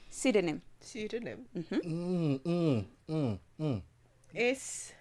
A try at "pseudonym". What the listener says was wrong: Let me just help you. Don't start with S. Silent.